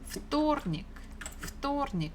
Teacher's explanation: Stress falls on O.